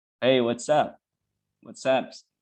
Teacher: You link as S and A, you link it, and it will sound like sup. All right. And the contraction is, of course, what is, you contract, and it will sound something like what's. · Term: linking sound